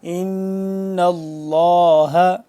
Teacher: لفظ اللہ سے پہلے زبر ہے تو یہ اس کو ہم پر کر کے پڑھیں گے، یعنی کہ موٹا پڑھیں گے